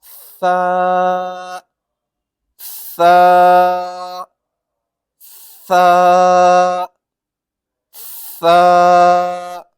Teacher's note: تو اب آپ سیکھیں گے جو حرف سا ہے اس کو اس طرح سے پڑھتے ہیں جیسے کہ ہماری جو زبان ہے اس کی نوک اور سامنے کے جو دو دانت ہوتے ہیں اوپر والے، اس کا کنارے سے زبان کو لگائیں گے، جیسے کہ سا سا سا سا۔